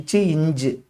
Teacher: நா இடை அண்ணத்தின் இடையை தொடுவதால் பிறக்கும் எழுத்தாகும்.